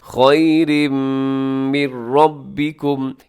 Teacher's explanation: یہاں من ربکم نون ساکن کے بعد را ہے جو کہ حروف یرملون میں شامل ہے، یہاں بھی ادغام ہوگا لیکن بغیر غنے کے ہوگا، مطلب یہاں پہ آپ نے نون کی آواز کو ناک میں نہیں لے کے جانا